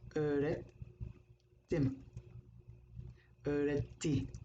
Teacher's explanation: Take the stem, the fiil, which is öğret, teach. You have a te at the end of the word, so it doesn't vibrate. It's a whisper.